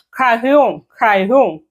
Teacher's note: ഒരു ഹ് സൗണ്ടിലേക്കാ വരുക ആറിന്റെ അവിടെ